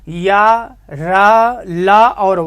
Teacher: या का उच्चारण स्थान तालु, या तालु से, और रा मूर्धा, ला दंत, वा दंतोष्ठ हो गया